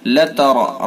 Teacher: را کو پر کریں گے چونکہ را کے اوپر زبر ہے، اور نون مشدد ہے، اس کے اندر غنہ کریں گے، ایک الف کے برابر ناک میں آواز لے جائیں گے۔